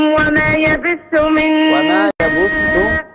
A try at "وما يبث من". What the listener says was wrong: وما يبث الباء مضمومة